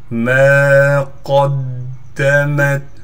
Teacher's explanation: قاف کو دال سے ملائیں گے، دال پر تشدید ہونے کی وجہ سے تھوڑا ٹھہراؤ کیا جائے گا